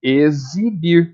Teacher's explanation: a palavra exibir o x tá com som de z